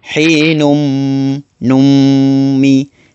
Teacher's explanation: Di sini hukumnya idgham ma'al gunnah yang perlu dibaca dengung.